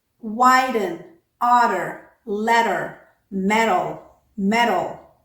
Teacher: T was flanked by vowels and the vowel that came after it was unstressed every single time